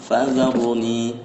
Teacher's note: Nah ini aru, nah ini di ro nya jangan fazarni, nah ini fazaruni, nah gitu ya. Jadi jangan ar tapi aru, tebalkan ya